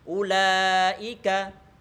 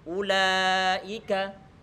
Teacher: huruf-huruf hamas di saat dia telah berharokat, hamas masih ada cuman menjadi lemah